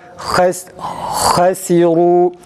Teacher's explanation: Türkçedeki tam A, kalın A sesinin çıkması gerekir.